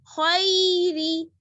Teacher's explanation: پڑھنے میں خے نہیں پڑھنا ہے خی خی را زیر ری را کو باریک پڑھنا ہے کیونکہ را پر زیر ہے